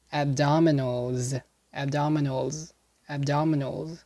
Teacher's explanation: notice the s in the end is not pronounced as an s and unvoiced but a voiced z